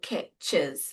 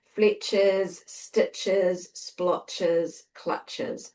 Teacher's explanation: And that is basically because when we're doing the plural, we almost add like an extra syllable